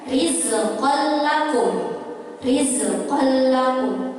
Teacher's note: Di sini ada tanwin bertemu dengan huruf lam, yaitu huruf idgham bila gunnah. Nah, ini tidak dengung seperti idgham bi gunnah.